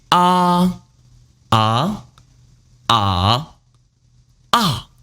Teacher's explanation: Usually there are 4 tones in Chinese. First tone high, ah. Second tone rising, ah. Third tone turning, ah. And fourth tone falling, ah. Ah, ah, ah, ah.